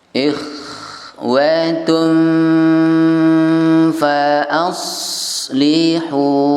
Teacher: tunnya nyamar ke fa menjadi tum, hampir mirip m karena ya sudah siap-siap mengucapkan huruf fa. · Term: bunyi N yang samar